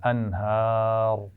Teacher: انہار کی را کو وقف کرتے ہوئے موٹا پڑھنا ہے